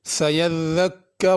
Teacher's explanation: یذکر میں ذال ہے، اس کو زا نہیں پڑھنا